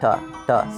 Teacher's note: Pi, and then right, and then the t, there's like a theta was like theta, or no, yes, theta, and then the other version of t in Greek was more of a non-aspirated ta sound